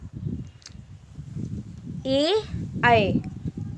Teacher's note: इसका उच्चारण स्थान कंठ तालव्य है, कंठ तालु से इसका उच्चारण होता है।